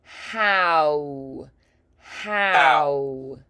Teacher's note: The tongue is more lifted in the back and the the corners of the mouth come forward. So it kind of like swaps position.